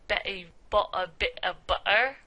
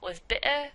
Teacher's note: a kind of cockney accent where glottal stops are really pronounced